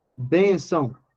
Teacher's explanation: A sílaba tônica é bem. São não é sílaba tônica. O tio apareceu apenas para indicar que o A é nasal.